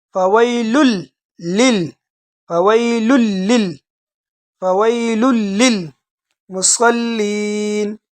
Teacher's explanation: آپ اس کو فویلن نہیں پڑھے، لام کو لام کے ساتھ ڈائریکٹ ملا دیجئے